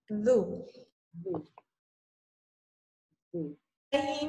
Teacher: zu keluar dari ujung lidah bertemu ujung gigi saya di atas. Zu digigit.